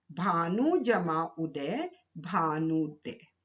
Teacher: भानु शब्द का अंतिम वर्ण है उ और उदय शब्द का प्रथम वर्ण है उ, तो दोनों ह्रस्व उ मिलकर दीर्घ उ में परिवर्तित हो गए।